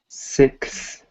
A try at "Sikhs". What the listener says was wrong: Sikhs. It's more of an E sound instead of. It's not like a Sykes. It's Sikhs.